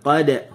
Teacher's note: Just buka mulut. Qad, huruf dal, hujung lidah digusi. Tempat tumbuh gigi tu.